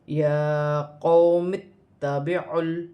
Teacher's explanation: یہاں پر میم کو تا کے ساتھ ملا کر پڑھا جائے گا